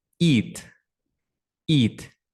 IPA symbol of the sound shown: i: